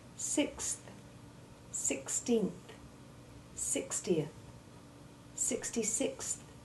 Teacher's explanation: You must make the X1 sound in full, then immediately push your tongue forward between your teeth to make the soft TH sound